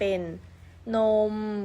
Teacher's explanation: นมก็จะลากลากยาวได้เรื่อยๆเสียงไม่เปลี่ยนแปลง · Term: คำเป็น